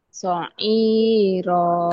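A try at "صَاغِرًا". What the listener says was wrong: kan ada titiknya tuh. Sogi. Sogi. Gi.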